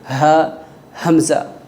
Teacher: ان دونوں کا مخرج حلق کا آخری حصہ ہے جو سینے کی طرف جاتا ہے